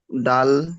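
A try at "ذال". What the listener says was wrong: দাল নয়, দেখেন এটা দালের মতো দেখতে, উপরে একটা নুক্তা আছে, ভালো করে দেখেন।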